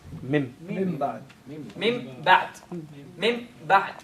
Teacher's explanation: You have to do the least amount nasalization and the ba sharp. Thank you. And the ba has to appear completely separate, divided from the first one. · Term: complete idhar